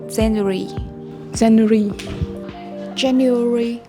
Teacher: there are four syllables and the first syllable gets the stress there's a hidden y and a hidden w